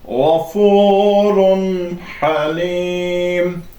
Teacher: İxfada biz səsi burun boşluğuna verirdik, genizə verirdik. Burada isə açıq şəkildə tənvin və nun-u sakini oxuyuruq. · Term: izhar